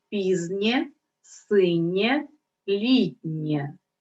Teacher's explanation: буква є позначає один звук е після м'якого приголосного